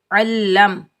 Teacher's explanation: عین کے اوپر زبر، عین کو ہم حلق کے درمیان سے ادا کریں گے، عین کے اوپر زبر، عین کو ہم لام مشدد کے ساتھ ملائیں گے، لام مشدد کو ہم سختی اور جماؤ کے ساتھ ادا کریں گے، بغیر کھینچے پڑھیں گے۔